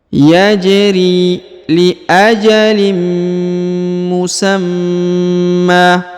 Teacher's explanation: huruf ja ini berharakat sukun maka dipantulkan atau diqalqolahkan